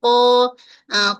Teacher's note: Dia terangkat pangkal lidah tapi infitah bahagian tengah lidah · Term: huruf qaf